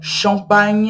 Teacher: ch em francês a gente dá o som de x